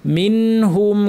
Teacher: নুন সাকিন পর হা আছে, এই নুনকে স্পষ্ট করে বা ইজহার করে পড়তে হবে · গুন্না লম্বা করব না।